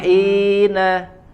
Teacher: hi-nya dinaikkan ke atas sedikit ya, di wasatul halq, di tengah tenggorokan